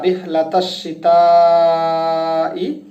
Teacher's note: এখানে আলিফ 1 হরফ পরিমাণ টান দিতে হবে, লাম 1 হরফ পরিমাণ টান দিতে হবে, ফিহিম রিহলাতাশ শিতা, রিহলাতাশ, শিনের উপর তাসদিদ আছে যে কারণে এটা 2 বার উচ্চারণ হবে এবং তায়ের উপরে 4 আলিফ পরিমাণ টান আছে যে কারণে আমাদেরকে তা রিহলাতাশ শিতাই, তাটা 4 আলিফ পরিমাণ টান দিতে হবে এবং তারপরে আসছে কি ওয়াস-সাইফ, ইয়া সুকুন তার আগের হরফ যে জবর, যে কারণে আমাদেরকে 2 হরকত 4 হরকত বা তারও বেশি পরিমাণ টান দিতে হবে।